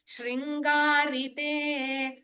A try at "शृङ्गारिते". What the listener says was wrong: Again, there is a tinge of Shri, E ki matra heard, but it is Shri only. Only R ki matra to be heard.